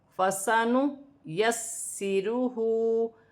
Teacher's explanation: نون پر کھڑی زبر ہے، اسے بھی ایک الف کی مقدار کھینچ کر پڑھا جائے گا. یہاں پر سین مشدد ہے، سین کو 2 مرتبہ پڑھا جائے گا جماؤں کے ساتھ. · ہا پر الٹی پیش ہے، اسے ایک الف کی مقدار کھینچ کر پڑھا جائے گا